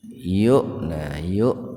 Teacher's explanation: hamzah yang sukun di tengah-tengah kata. Membacanya itu dihentakan, jadi enggak dibaca panjang tapi dihentakan. Itu penulisan hamzah di atas wawu karena sebelumnya domah.